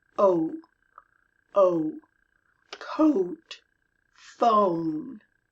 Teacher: The O in most American dialects has an U on the end, always. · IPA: /ou/